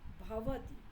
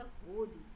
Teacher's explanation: शौरसेनी में 2 स्वरों के मध्य संस्कृत के अघोष त अथवा थ सघोष हो जाते हैं, अर्थात त द में परिवर्तित हो जाता है और थ ध में, जैसे भवति की जगह होदी शब्द बन जाता है।